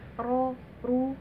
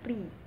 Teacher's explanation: Nah, ketika ri jangan hanya ri, tapi senyum, ri gitu. Kalau misalnya ro tafkhim dia monyong ya, ro, ru, tapi kalau ro tarkik senyum, ri, karena dia tipis.